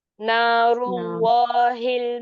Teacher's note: र को आप हैवी कर रही है लेकिन आपको हैवी आपकी जबान से करना है मतलब पीछे का हिस्सा ऊपर उठा के ना कि आपके लिप्स को राउंड करके